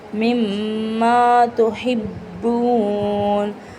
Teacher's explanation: மிம்மா ஷத்து அழுத்தி நீட்டணும்.